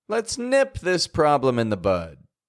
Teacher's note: the verb the action word is getting the attention here the thing that we're doing to solve the problem